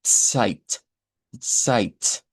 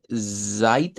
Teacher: Tiene que haber un ts, una T y una S. Sight, sight. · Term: africado